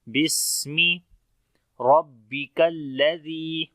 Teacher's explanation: را کو موٹا پڑھیں گے، با کے اندر تھوڑی سختی آئے گی شد کی وجہ سے